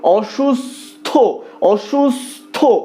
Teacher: যেখানে দন্তস্ব থ এর সাথে যুক্ত হয়নি সেক্ষেত্রে কিন্তু তালব্য স্বয়ের মতোই উচ্চারিত হচ্ছে, কিন্তু যেখানে থ এর সাথে যুক্ত হচ্ছে সেখানে দন্তস্বয়ের মতো উচ্চারিত হচ্ছে